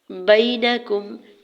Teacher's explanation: فاحکم، فا کے زبر کو جلدی سے ادا کرنا ہے، حمزہ کے زبر کو ہا ساکن کے ساتھ ملائیں گے، فاح، کاف کی پیش کو بغیر کھینچے ہوئے ادا کرنا ہے، میم کی پیش کو بھی بغیر کھینچے ہوئے ادا کریں گے۔ بینکم، یا ساکن سے پہلے با کے اوپر زبر یا لین ہو رہا ہے، نرمی سے موڑتے ہوئے ادا کریں گے